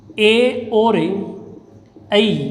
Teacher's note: इसका उच्चारण है वो कंठ और तालु से होता है, इसलिए इनको कंठ तालव्य वर्ण भी कहा जाता है। ए दैतो कंठ तालु यानी ए और ऐ का उच्चारण स्थान कंठ और तालु से होगा, इसलिए ये कंठ तालव्य।